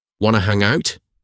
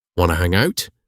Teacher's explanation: For your pronunciation hack, the words want to transform instantly into wanna. You do not pronounce the T sounds at all. Say it with zero effort, letting your jaw relax.